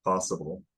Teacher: you have a rounder vowel probably for the first vowel in possible